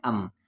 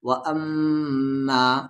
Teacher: یہاں میم پر شد ہے تو غنہ ہوگا